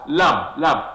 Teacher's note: LAMB is pronounced as lamb, lamb. That very B sound is silent.